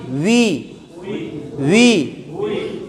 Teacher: বাংলাতে ব আর ভ বোঝেন, ব আর ভ, এই ওয়ার উচ্চারণটা বর শিকার বিয়ের মতোও না, আবার ভর শিকার ভিয়ের মতোও না, এই দুইটার মাঝামাঝি উই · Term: ওয়াও জের উই